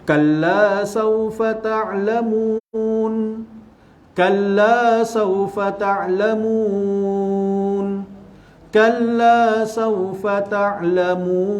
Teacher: Ma'arid disukun ni mad yang terjadi kerana nak berhentikan bacaan. Kita boleh pilih 2, 4 ataupun 6 harakat.